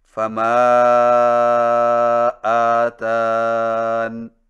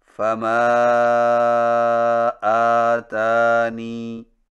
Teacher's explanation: یا کو حذف کر کے وقف کرنا، یعنی فما آتان۔